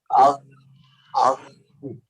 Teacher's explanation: আমরা যেখান থেকে গড়গড়া করার সময় পানি আটকাই ওই জায়গা দিয়ে আমরা গইন আর খ দুইটা হরফের উচ্চারণ করব · আগো কলকলার মতো না হয়, দ্বিতীয়বার ধাক্কা লাগবে না